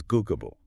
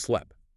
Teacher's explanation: a b is just a voiced version of p right your vocal cords vibrate for >> b but not for p >> correct same mouth shape Okay, you just add vibration.